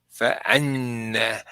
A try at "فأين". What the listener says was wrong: أين. You said أن. أين. So فأين.